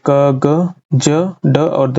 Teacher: अल्पप्राण ध्वनियां जिसमें कम श्वास निकलती है।